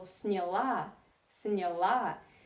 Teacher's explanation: So if you talk about feminine form, you see that the stress is on the last syllable